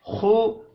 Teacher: खा को मोटा पढ़ेंगे, खुज़ु खींच कर नहीं पढ़ा जाएगा।